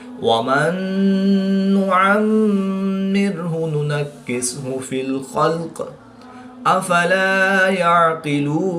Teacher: میم مشدد میں بھی ہمیشہ غنہ ہوتا ہے تو یہاں پر ہم غنہ آنی کر کے پڑھیں گے